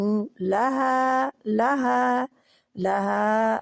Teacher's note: ہا کو بہت آسانی سے نکلنے والی ہا ہے، جو کہ سینے کی جانب حلق کا، جو ہمارا گلے کا آخری حصہ سینے کی طرف ہوتا ہے، ادھر سے حمزہ اور ہا نکلتا ہے، تو یہ ہا ادھر سے ہے.